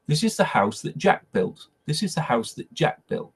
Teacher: You reduce it to this little sound. And I don't even say the t, I catch it in my throat.